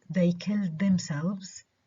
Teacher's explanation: themselves as an object in this sentence so it's unstressed